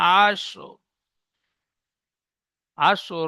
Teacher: র পুরো র পরিপূর্ণ হবে না, হালকা আয়াত করে পড়তে হবে।